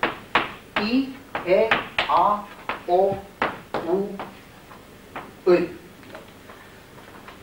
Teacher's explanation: От узких гласных к широким и опять к узким.